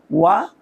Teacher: ওয়াও দুই ঠোঁটের মাঝখানের ফাঁক থেকে পড়তে হয়